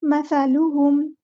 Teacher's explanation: مثلہم کمثل الذی، مثلہم، سا کو بہت نرمی سے ادا کرنا ہے، مسا نہیں کرنا، ٹھیک ہے، سیٹی نہیں لے کر آنی، مسا نہیں، مثلہم، لام کی پیش کو اچھے سے ادا کرنا ہے، ہونٹوں کو راؤنڈ کر کے